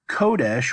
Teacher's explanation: Kodesh, which is the Segalit version of this, where we accent the first syllable. Kodesh is the noun.